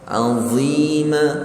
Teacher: Huruf yang hujung lidah bertemu hujung gigi depan, cuma dia tebal.